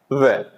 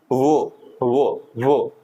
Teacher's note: दंत और ओष्ठ तो दोनों से मिलकर जो हम बोलते हैं वो है व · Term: दंतोष्